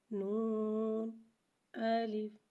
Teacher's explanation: نون کو ایک الف یعنی 3 مقدار کھینچ کے پڑھیں گے، جبکہ الف کو بغیر کھینچے پڑھیں گے